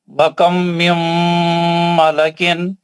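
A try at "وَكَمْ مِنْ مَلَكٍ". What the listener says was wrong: دونوں غنّے صحیح کریے یار، کیا ہو گیا آپ کو؟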